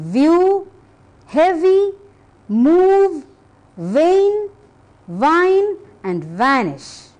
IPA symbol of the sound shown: v